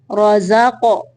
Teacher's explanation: زا کو تھوڑا سختی سے پڑھیں گے، قاف کو قلقلہ کرنا ہے۔